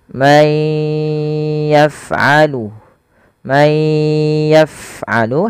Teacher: masukkan suara nunnya kepada huruf ya dan ditahan